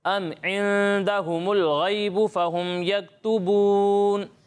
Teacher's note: عندهم الغیب یہاں جو ہے اکفا ہو رہا ہے, اس کی مقدار غنہ کی آپ نے پوری کرنی ہے ٹھیک ہے. آپ بھی سنا دیں.